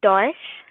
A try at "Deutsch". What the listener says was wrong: I think there is a mistake. I can't figure out exactly what is the mistake, but I think you are not saying ch, you are saying sh, you're saying Deutsch. So ch, Deutsch, Deutschland, Dolmetscher.